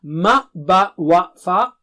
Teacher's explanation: ma wa fa are from the lips